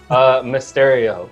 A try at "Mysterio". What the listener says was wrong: It felt like you're saying a stereo at the end. Mysterio. Like in the boombox on the shoulder.